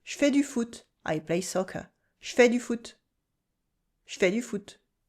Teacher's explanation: in fast speech, the je shrinks to nothing